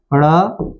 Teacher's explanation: जीवा का जो अग्र भाग है वह ऊपर उठ कर के कठोर ताल से टकराती है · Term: द्विगुण व्यंजन